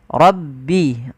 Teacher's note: lafal rabbi suara ro-nya ditebalkan, ro. Rabbi.